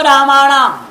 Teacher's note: दंत नकार को मूर्धन्य नकार कर देंगे दंत नकार है उसको मूर्धन्य नकार कर दिया जाएगा तो रामा